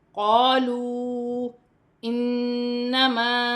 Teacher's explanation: یہاں واو مدہ ہے اور چھوٹی مد بھی ہے، چار الف کی مقدار کھینچ کر پڑھا جائے گا